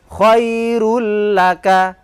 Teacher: Begitupun khairun laka menjadi khairul laka, diidghamkan. Karena tanpa dengung maka tidak usah ditahan. Khairul laka, baca seperti biasa, hanya saja cuma ditekan.